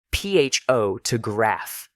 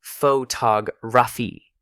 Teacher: In photograph, the stressed syllable has a clear O sound. But in photography, that same vowel becomes schwa because it's no longer stressed. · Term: stress shift